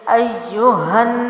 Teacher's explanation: یہاں نون مشدد کا غنہ لازمی غنہ ہے تو یہاں غننے کی آواز پیدا کریں گے